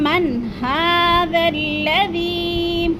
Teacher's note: اظہار حلقی، یعنی بغیر غنّے کے اس لفظ کو پڑھیں گے